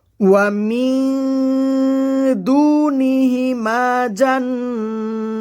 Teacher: ওয়া মিন, মিন এখানে ইকফার নিয়ম হয়েছে। নুন সাকিনের বামে ইকফার 15 হরফের একটি হরফ দাল আসছে, নুন সাকিনকে নাকের ভিতর লুকিয়ে গণনা করে পড়তে হবে। ওয়া মিন দু, দু একালিফ টান হবে।